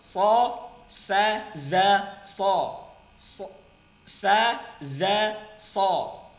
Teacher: Keluar dari ujung lidah hampir bertemu dengan gigi depan bagian bawah. Ya, gigi depan bagian bawah.